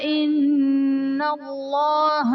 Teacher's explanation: ان اللہ میں نون مشدد ہے، یہاں پر غنہ کر کے پڑھیں گے اور اس میں جلالت اللہ عز و جل کے لام سے پہلے نون پر زبر ہے تو یہاں پر اس میں جلالت اللہ عز و جل کے لام کو پر یعنی موٹا کر کے پڑھیں گے۔